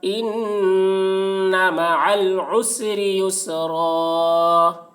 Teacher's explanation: را کے اوپر دو زبر کی تنوین ہے، دو زبر کو، را کے دو زبر کو حالت وقف میں ایک زبر کے ساتھ الف پڑھا جائے گا